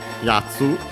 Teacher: Accent on the ya, so on the first syllable.